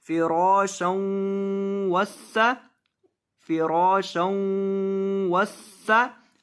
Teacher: फिराशा वस्समाअ बिनाअ, यहाँ गुन्ना करना है आपने वाव के ऊपर. यहाँ वाव के ऊपर आपने ये दो ज़बर की तनवीन है शीन के ऊपर और शीन दो ज़बर वाव शौ, यहाँ आपने गुन्ना करके पढ़ना है.